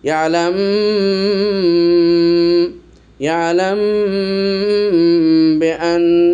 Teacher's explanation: এটাকে কিন্তু গুণনা করতে হবে মিম সাকিনের পরে বা এসেছে